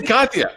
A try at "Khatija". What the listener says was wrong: The J is silent in many languages, so it throws people off. Khatija.